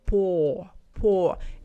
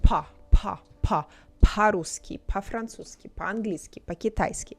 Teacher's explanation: when it's not stressed we say ah so we don't say Po Po it's more like PA